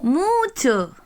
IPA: mu:tʃo